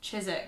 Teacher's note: the s in Chiswick C H I S is not said like ChiSwick S it's pronounced ChiZwick with a Z